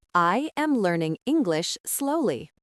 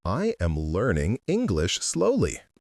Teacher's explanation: Notice the stress on learning and slowly.